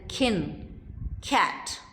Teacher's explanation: it is aspirated when it comes initially as in kin cat unaspirated when it is preceded by S